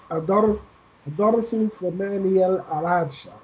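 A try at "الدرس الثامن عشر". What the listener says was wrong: Look, here you have Shadda on Sa. Join Sa with Seen. Adas Sus Samina. Yes, Adas Sus Samina Ashara.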